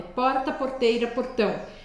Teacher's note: tipo porque eu nasci em São Paulo é porta Porteira portão eu uso a ponta da língua e eu faço ela vibrar no céu da boca